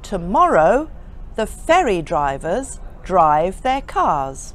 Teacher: I pronounced all the R's except the one in the word car because that was not followed by a vowel.